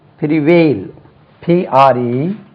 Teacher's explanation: Stress lies on the second syllable.